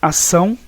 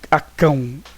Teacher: Temos aqui o tio, que é um nasalizador, tá, de sons vocálicos. Ele transforma os ditongos, no caso orais, em nasais, tá? Então faz com que tenha esse som nasalado.